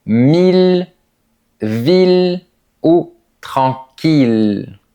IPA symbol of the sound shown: il